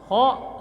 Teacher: ko suara berdahak sama ditenggorokan